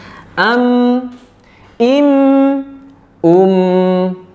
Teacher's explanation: Maka termasuk bahasan kita hari ini mim sukun ya. Huruf mim termasuk huruf yang memiliki sifat jahr, artinya nafasnya tertahan. · Jadi mudah sekali memahaminya bahwa ketika melafalkan huruf mim saat dia mati, itu dalam kasus ini ya, itu tidak ada nafas yang keluar dari makhraj mimnya. Tidak mungkin kan kita bacanya im, nah, tidak, tapi nafasnya tertahan.